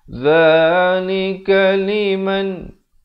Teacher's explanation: Dzalika liman izhar halqi. Sempurnakan saja bunyi nun mati, jangan dipanjangkan terus masuk.